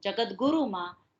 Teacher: પાછળના ધ્વનિના ઘોષત્વને કારણે, એના કંપનોને કારણે આગળનો જે ત ધ્વનિ છે જે અઘોષ છે એ ઘોષ થાય છે